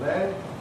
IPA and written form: led (led)